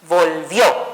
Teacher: Es una palabra bisílaba, cumple con la regla, termina en vocal, por lo tanto su sonido fuerte fue en la posición última